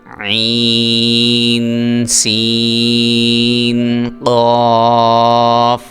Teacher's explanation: سین جو ہے یہ اس کی سیٹی آپ نے ادا کرنی ہے، نکالنی ہے